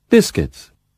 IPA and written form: ˈbɪskɪts (biscuits)